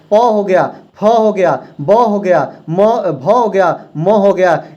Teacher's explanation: याद रखेंगे दोनों ओठ सट रहे हैं। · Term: ओष्ठ व्यंजन